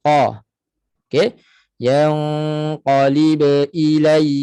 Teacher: infitah Tengah lidah terletak tak naik sebab itu bunyinya terbuka